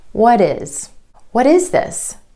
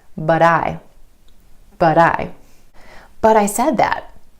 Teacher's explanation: you're going to put in that d sound or flap t.